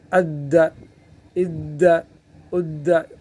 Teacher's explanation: دال کو جو ہے وہ مشدد بنا لیتے ہیں تو سختی کے ساتھ پکڑیں گے۔ اد، اد، اد، قلقلہ پہلے سے ہے، مشدد حرف میں اور سختی ہوتی ہے تو اس میں گویا کہ سختی بڑھ جائے گی اور حرکت تو آخر میں دینا ہے، کوئی قلقلہ ہے۔